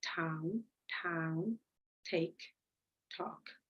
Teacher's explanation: It's alveolar because the tip of your tongue touches your alveolar.